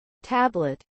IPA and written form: ˈtæblət (Tablet)